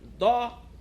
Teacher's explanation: E o dó é um som mais forte, é um som mais para cima